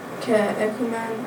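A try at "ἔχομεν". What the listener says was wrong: Yep, just watch the echomen, not echumen. But yeah, that was good.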